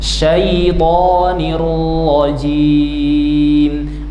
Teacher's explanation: Syait huruf th panjangnya dua harakat.